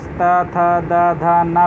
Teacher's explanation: और उसी प्रकार ता था दा धा ना बोलेंगे तो जीभ आपकी दांत पे आके लड़ेगी, तो दंत हो जाएगा